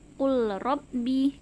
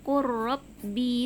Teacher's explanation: huruf lamnya langsung diturunkan atau dimasukkan ke huruf RO nya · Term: diidghamkan